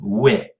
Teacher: Alors la prononciation, c'est donc pareil pour cheminois, et toi mis en exil, donc imparfait de être s'écrivait E-S-T-R-E, donc sans accent circonflexe, comme on le fait de nos jours, être, donc on prononçait toujours ouais, donc toujours cette ancienne diphtongue O-I ou O-Y